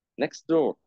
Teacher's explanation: dropping t sound between consonants، اللي في النص يكون تي ت sound next door، وعملت هنا dropping للتي.